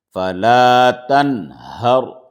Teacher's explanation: صرف را کو موٹا کر کے پڑھ لیں گے کیونکہ رائے ساکنہ سے پہلے زبر ہے · تو اب یہاں پر جیسا لکھا ہوا ہے ویسے پڑھیں گے، یعنی کہ نون کو ظاہر کریں گے، کوئی غنہ نہیں ہوگا، اخفا نہیں ہوگا ، کچھ نہیں ہوگا۔ فلا تنہر، را کے اوپر زبر ہے